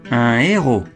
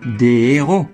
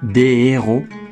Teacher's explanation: le H vient du latin mais il est aspiré un héros pas de liaison